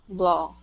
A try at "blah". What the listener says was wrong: Blah. So you're still pronouncing an ah. You're going to an ah sound, dropping your tongue. Your tongue. You shouldn't be forcing your tongue down as much. It's just a very lazy sound. Blah.